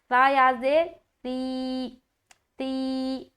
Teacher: یہاں پر نرمی کے ساتھ تا کی ادائیگی ہوگی بغیر سیٹی کے۔